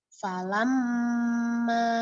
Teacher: Jadi didengungkan dimasukkan ke rongga hidung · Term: gunah asliah